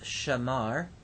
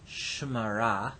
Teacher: If we add an object suffix, the vowel at the beginning of the verb may reduce. This is simply an issue of shifting the accent of the word and causing vowel reduction.